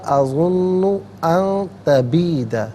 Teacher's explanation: اظن ما اظن ان تبید، ان میں نون ساکن ہے، اس کے بعد تا حرف اخفاء آ رہا ہے، تو نون ساکن کو اخفاء کے ساتھ پڑھیں گے، یعنی ناک میں آواز دے جا کر گنگنانا، اسے اخفاء کہتے ہیں